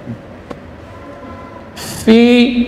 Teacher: bibir bawah bagian dalam menempel pada ujung gigi seri atas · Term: fa